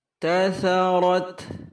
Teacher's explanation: Sa-nya lembut sekali ujung lidah, saudaranya huruf zal tadi, kemudian ro tebal, terakhir ta ta'nits ketika waqaf atau sukun ada hamasnya kecil.